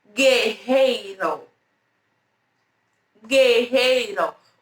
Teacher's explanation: É como se esse U ele fosse mudo, tá bom?